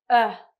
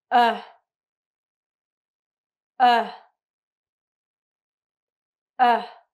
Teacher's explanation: Your tongue is in the middle part of your mouth. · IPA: /ʌ/